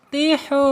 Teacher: Awas jangan tihu atau tikhu ya. Karena ha ini ada di tenggorokan tengah ya makhrajnya